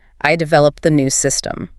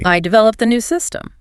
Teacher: So by stressing developed, the focus is on the action itself. It's your personal higheffort contribution.